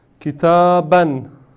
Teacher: se lee kitaban con una nun, n extra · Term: doble fatha